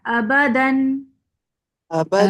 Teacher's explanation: دال کو دبا کے پڑھے، تا کی جیسی آواز نہ آئے